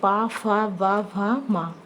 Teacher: पा वर्ग जो आपका है वो ओष्ठ है, जैसे पा, फा, वा, भा, मा।